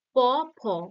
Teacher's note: এবং দেখো এইরকম ভাবে ভাগ আছে প, ফ, এগুলো কি ওষ্ঠধ্বনি। দেখো প, ফ এর মধ্যে শুধু ঠোঁট দুটো কাজ করছে।